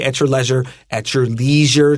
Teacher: you can use a long e here so you can say at your leisure